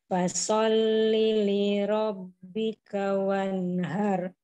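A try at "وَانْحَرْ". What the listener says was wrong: Nah, itu ha kecil, jangan har. Wan ha ha.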